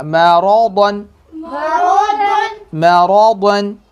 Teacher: را کو موٹا، میم کو باریک اور را کو موٹا، ضاد کو موٹا